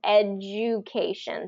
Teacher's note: So the invisible Y rule is whenever there's a consonant and then the letter U, we're going to put a y sound in there to kind of help glide from one sound to the next.